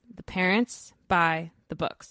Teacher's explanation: We race through the because our beats fall on the content words. · This has 6 syllables. The parents buy the books. But we still say it with 3 beats.